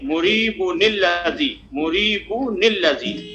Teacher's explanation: تو کہہ رہے ہیں کہ اب تنوین اس سے ادغام نہیں کریں گے، بلکہ ایک نون لا کر کے اس کو کسرہ دے کر کے تب پڑھیں گے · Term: نون قطنی